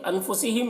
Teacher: نون کی آواز کو ناک میں چھپا کر پڑھیں گے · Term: اخفا